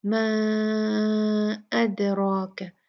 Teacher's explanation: इसके बाद हमजा आ गया है तो ये 4 काउंट में तब्दील हो गई। म अदराक, दाल पे यहाँ पर कलकला होगा, और फिर उसके बाद रा जो है वो हैवी पढ़ी जाएगी, भारी पढ़ेंगे।